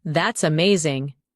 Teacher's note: When you say that's amazing, your tone rises with excitement. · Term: rising tone